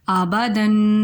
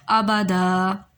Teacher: آبادہ وقف اس لیے کیا گیا کیونکہ آخر میں الف ہے۔ ہم وقف کی صورت میں ہم حرف کو ختم نہیں کریں گے بلکہ ایک حرکت جو ہے اس کو حذف کر دیا جائے گا، اس کو ختم کر دیا جائے گا، تو آبادہ یعنی دال زبر الف دا بن جائے گا وہ۔